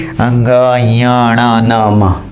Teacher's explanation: पंचमाक्षर, और वो नासिक है, नाक से उच्चारित